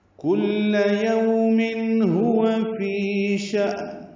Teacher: یہاں پہ کاف باریک اور لام بھی باریک ہے